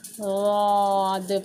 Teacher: वाद के लिए प्रॉपर हमारी ज़बान को ऊपर के पांच दाढ़ों को लगाएंगे, या फिर आप राइट साइड लगाएं या फिर लेफ़्ट साइड लगाएं, वाद पढ़ेंगे, ठीक है, वाद इस तरह से पढ़ेंगे और मोटा, मुंह पूरा भर जाएगा इसमें।